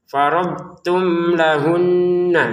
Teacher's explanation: Mimnya bertemu lam dibaca dengan jelas. · Nun bertasydid sama. Nun bertasdid dengung ya.